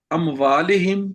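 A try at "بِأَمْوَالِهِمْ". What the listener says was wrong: بی اموالہم، بے چھوٹ گیا آپ سے. بی اموالہم وانفسہم.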